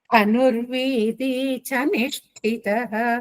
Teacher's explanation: కింద వకారం సంయుక్తాక్షరం నిష్టితః షణ్ముఖంలో ష కింద ట ఠ మహాప్రాణం ఉంది లాస్ట్ కి విసర్గలో హ వస్తుంది